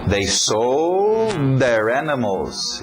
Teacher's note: O D entrando no TH de there.